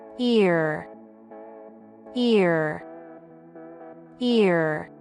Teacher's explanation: Tente pronunciá-la agora lembrando desses pontos: laterais da língua tocando nos dentes, a língua levemente inclinada para cima, e dessa vez tente pronunciar o R do ear como se fosse esse R caipira. Tente fazer isso de uma forma com que se aproxime do seguinte som: ear. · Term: R em inglês